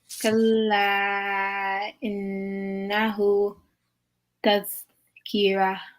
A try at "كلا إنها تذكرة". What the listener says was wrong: Tadhkira. I think you said who actually on the ha.